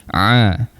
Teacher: Ain kita berikan penekanan sikitlah di tengah rongga kerongkong. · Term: huruf ain